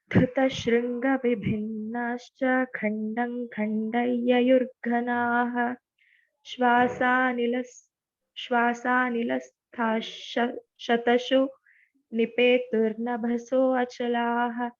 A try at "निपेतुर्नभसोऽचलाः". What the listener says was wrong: Not to say Achala. That Avagraha we should not say. Nabhasochalaha. Shwasa and not Shwasa. Shwasa nilasta shatasho nipetur nabhasochalaha.